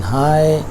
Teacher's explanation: The movement in this diphthong is from low towards high front. یہ جو حرکت ہے لو سے یعنی آ سے ای کی طرف جو کہ ہائی فرنٹ ہے.